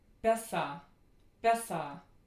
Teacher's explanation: This is a short, near-low, unrounded, reduced vowel. Reduced, again, that means that it is obligatorily in an unstressed syllable. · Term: Tiefschwa